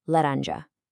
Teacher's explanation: we've got our soft, tapped R, our nasal uh, and our soft zh